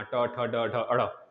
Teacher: तो मूर्धन्य मतलब ट, ट मतलब जीभ उल्टा होगा, तो ट ठ ड ढ ड़ आप लोग निकाल सकते हैं इस तरह बोलकर। तो मूर्धन्य मतलब कि जीभ उल्टा करके बोलना